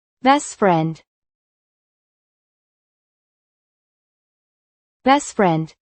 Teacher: The final T is barely pronounced.